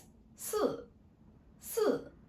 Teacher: Your voice drop from very high to very low.